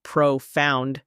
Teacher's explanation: notice how the emphasis is on the second syllable